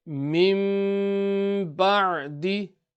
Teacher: After noon sakin or tanween, if the letter ba appears, then the noon sakin and tanween will be changed into a meme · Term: iqlab